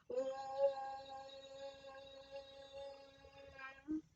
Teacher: इसका मतलब है कि ओम हम 3 गुने समय तक ओ का उच्चारण करेंगे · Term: प्लुत स्वर